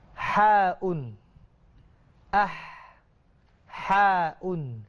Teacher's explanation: Ha ini huruf halqiyah lah, huruf halqum. Jadi dia ini ada angin. Sebelum nak sebut tu keluar angin dulu. Bukan lepas sebut keluar angin.